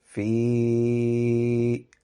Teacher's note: it has a small madda on it, so the sound will be prolongated. So it will be fi, longer than a standard huruf madda, but shorter than a large madda.